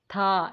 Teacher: हमारी जो टंग की टिप है वो अपर टीथ के साथ टच कर रही होती है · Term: डेंटल